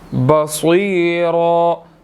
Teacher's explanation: صاد کو موٹا ادا کیا جائے گا اور اس کے بعد یا مدہ ہے، 1 سیکنڈ لمبا کریں گے، بصیرا، را کو بھی موٹا ادا کریں گے اور رن نہیں پڑھنا، را پڑھا جائے گا، ٹھیک ہے، ایک حرکت اس کی سائلنٹ ہو جائے گی۔